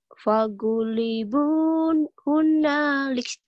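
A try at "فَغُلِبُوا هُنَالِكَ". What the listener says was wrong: Gak ada naknya. Fagulibu.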